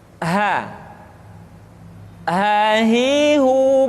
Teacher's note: dikeluarkan dari tenggorokan yang terjauh sama seperti kita mengucapkan huruf a